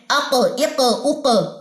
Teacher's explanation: कफ के ऊपर अगर जजम आ जाए तो उस परे हम कलक करते हैं